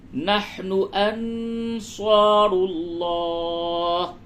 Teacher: نون ساکن کے بعد صاد ہے اخفا ہوگا